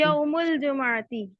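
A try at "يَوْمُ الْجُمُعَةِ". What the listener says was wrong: जुम्मा नहीं बोलना, जुमुआती।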